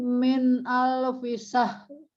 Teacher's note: Jadi jangan syah, tapi syahr. Kita harus bunyikan ya, karena berhentinya di ro, bukan di h.